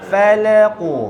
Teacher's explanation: Fa dengan lam nipis, qaf tebal.